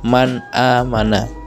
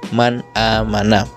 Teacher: Di sini ada nun sukun bertemu dengan alif, maka nun sukunnya dibaca jelas. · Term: idhar